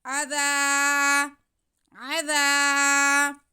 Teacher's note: इन पे ज़बर, ज़ाल पे ज़बर और साथ में अलिफ, तो ये अलिफ मद्दा हो गया। ज़ाल की आवाज़ को हम खींच लेंगे, ज़ाल को नरमी से पढ़ेंगे, सीटी की आवाज़ नहीं आएगी।